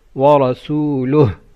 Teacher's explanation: Ra should be full mouth and you say ha at the end.